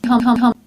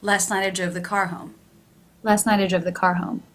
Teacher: the word home in the first sentence here quite high in Pitch the word home in the second sentence here quite low in Pitch